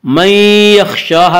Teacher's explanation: मन यख़शाहा में इदगाम बिलगुन्ना होगा। इसका कायदा है कि नून साकिन और तनवीन के बाद अगर हुरूफ़ यरमलून में से कोई हरफ आए तो इदगाम होगा।